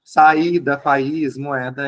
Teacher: são duas vogais em sequência, só que elas estão em sílabas separadas, uma depois da outra, mas cada uma num canto, tá? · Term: iato